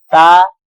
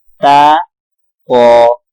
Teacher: تا باریک پڑھا جائے گا، قا موٹا پڑھا جائے گا، ٹھیک ہے۔ تا قا وا، اب زال اور وا ان میں فرق کرنا ہوگا۔